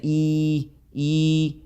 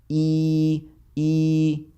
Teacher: اور دوسری چیز یہ ہوتی ہے اس کے اندر کہ زبان کا جو درمیان والا حصہ ہے جو وسط اللسان ہے وہ آپ کا اوپر کی طرف جاتا ہے